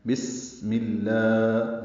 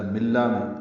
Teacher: میم کی زیر کی وجہ سے لام میں اس میں جلالہ باریک پڑا جائے گا